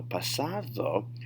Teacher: ds in the middle of words in spanish a lot of times it's going to have a th sound to kind of soften things so pasado rather than pasado if you say pasado and domingo